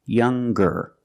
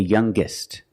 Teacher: when we change these adjectives with ER or with est we're going to pronounce the G sound the hard G